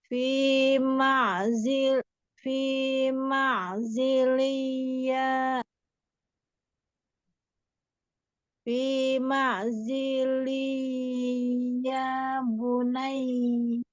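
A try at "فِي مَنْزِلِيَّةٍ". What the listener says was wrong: Oke, tapi kurang dengung sedikit lagi ditanwin ketemu ya. Coba masukkan ke hidung.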